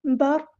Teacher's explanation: قاف ہم یہاں پہ پر پڑھیں گے، ہیوی لیٹر ہے۔ برق، قاف کی پیش کو لمبا نہیں کرنا، حرکات کو ہم لمبا نہیں کرتے۔